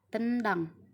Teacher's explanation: sedangkan n ada di alveolar yang ketiga itu ada kata tendang huruf N dan D di sini sama-sama letaknya ada di alveolar · Huruf N dan D di sini sama-sama letaknya ada di alveolar. Jadi kedua huruf ini nyambung dalam pembentukan katanya.